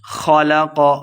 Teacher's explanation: الذی خلق فسوی، الذی یہ مد ہے، دو حرکات لمبا کر کے پڑھیں گے۔ خلق، خا اور قاف دونوں کو موٹا کر کے پڑھیں گے